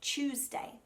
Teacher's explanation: Rather than saying Tuesday, which really would be correct, Australians tend to make it a ch sound, like it's a CH, and we say Tuesday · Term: chewy T